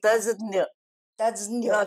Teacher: ज्ञ म्हणताना थोडासा द चा उच्चार होतो